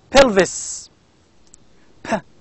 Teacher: it is a bilabial sound bilabial stop voiceless sound